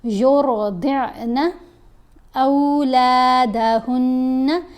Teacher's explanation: پھر را کو پر پڑھیں گے، ضاد کو بھی پر پڑھیں گے اور ضاد کو عین سے ملانا بھی ہے۔ یرضعن اولادہن، اب یہاں پر الف دیکھیں، الف کے اوپر زبر ہے، ساتھ واو ساکن ہے تو او آواز بنے گی، حرف لین ہے۔